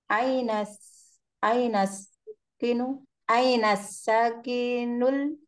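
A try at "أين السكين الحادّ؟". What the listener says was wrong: Bukan sakin tapi sikinu.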